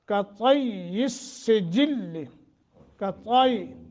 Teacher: طا کو موٹا کرتے ہوئے، یا مشدد ہے اور پھر آگے سین کے ساتھ بھی مل رہی ہے، ملانا بھی ہے اور مضبوطی کے ساتھ، اس میں کسی قسم کا کوئی ضعف یا ڈھیلا پن نہ آ جائے۔